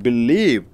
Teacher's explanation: Believe, it's a verb, so you are stressing on leave.